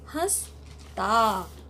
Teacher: यहाँ पे सांस मुख और नाक दोनों से ली जा रही है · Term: चंद्र बिंदु